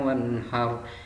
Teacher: Jadi apabila kalian membaca Al-Quran ada nun sukun bertemu dengan huruf H, maka hukum bacaannya disebut idhar dan cara bacanya harus terang